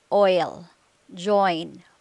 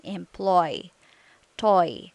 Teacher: your lips position move from slightly rounded oval position to relaxed slightly parted position your tongue's position relaxed move from mid high to high position